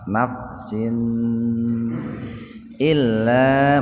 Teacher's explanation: kasratain ketemu hamzah secara terpisah, jadi dibacanya jelas di tenggorokan ya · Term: idhar